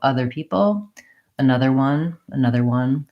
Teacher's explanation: at the end of another and other are always going to be unstressed. So weak in terms of not having tight syllable stress.